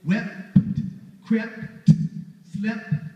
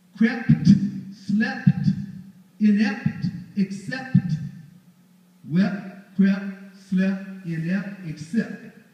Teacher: P is voiceless stop, T is a voiceless stop. They're both voiceless stops, and that means you're doubly articulating stops.